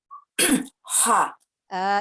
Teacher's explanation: Dia dari tengah tenggorokan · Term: huruf H